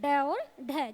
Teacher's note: जीभ हमारी ऊपर लगती है और एक झटके के साथ नीचे आती है, इसलिए इनका नाम द्विगुण व्यंजन रखा गया है। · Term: उत्क्षिप्त व्यंजन